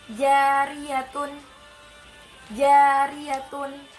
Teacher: ketika kita ingin mengucapkan huruf ro, makhrajnya miring ke belakang atau tepatnya di punggung lidah · Huruf takrir hanya ada satu, yaitu huruf ro. Ketika kita mengucap huruf ro, maka ujung lidah kita bergetar di antara langit-langit mulut. Nah, ketika kita mengucap huruf ro, ada getaran yang kita buat. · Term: sifat takrir